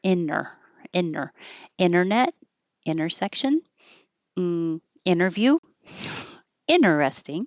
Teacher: you can drop the T and have inner. Because the T and the N are made in the same place. When your tongue goes up for the N, inner, instead of releasing inter, it makes it a little faster.